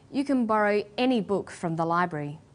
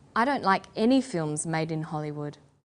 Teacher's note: When the word any is stressed, this tells us that we're talking about an unrestricted quantity or unlimited choice.